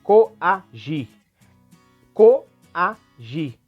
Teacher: tanto o o quanto o a eu falo na mesma entonação. São fortes iguais. Então, como eles são fortes, eles não podem ficar na mesma sílaba. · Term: hiato